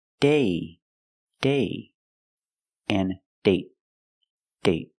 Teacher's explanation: So with date, we see the vowel is shorter because you have a stop T at the end.